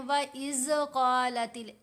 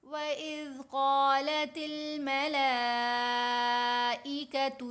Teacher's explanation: इसमें फ़र्क ये आया कि एक तो ज़ाल की आवाज़ गलत कर दी, ज़ाल की बजाय हम ज़ा पढ़ रहे हैं, तेज़ आवाज़ है ज़ा की, ज़ाल की आवाज़ नरम आवाज़ है।